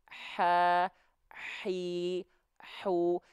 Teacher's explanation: sandarannya di tengah tenggorokan, itu tempat makhrajnya huruf h kecil. Makanya huruf h kecil kan berbisik. · Makanya huruf h kecil kan berbisik. Ya, nafasnya karakternya berbisik. Ha, hi, hu, karena dia dilafalkan dari tengah tenggorokan.